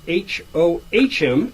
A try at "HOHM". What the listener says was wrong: Oh, you pronounced the H. home.